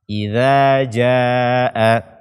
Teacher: ujung lidah bersentuhan dengan ujung gigi seri atas kita